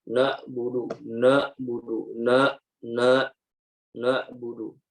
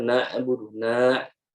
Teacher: kita membacanya dengan suara yang tidak jelas ya sehingga mirip dengan huruf alif yang dibaca tebal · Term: kesalahan